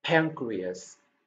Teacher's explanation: Pan, chữ n được đọc ra là âm ng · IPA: /ˈpæŋ.kri.əs/